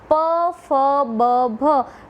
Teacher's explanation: ઉપરનો હોઠ અને નીચેનો હોઠ એકબીજાને સ્પર્શે છે. એટલે કે જ્યારે હવા બહાર નીકળે છે ત્યારે એ હવા હોઠને સ્પર્શે છે અને હોઠને સ્પર્શીને જે વ્યંજનનું ઉચ્ચારણ થાય છે તેને હોષ્ઠ વ્યંજનો કહેવામાં આવે છે.